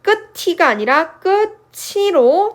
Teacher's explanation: 끝소리 티귿이 모음 이를 만나서 츠 발음으로 바뀌죠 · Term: 구개음화